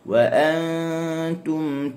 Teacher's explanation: Ya, pekat tu banyak naik ke hidung. Dia ikhfa ni campuran antara yang keluar melalui hidung dan yang keluar daripada mulut.